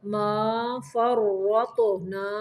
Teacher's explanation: را کو موٹا پڑھنا ہے، تو کو بھی موٹا پڑھنا ہے